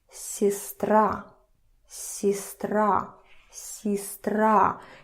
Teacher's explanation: you make the not stressed vowels a little bit not that clear. So it's a little bit, I don't know, kind of on the background of the stressed vowel.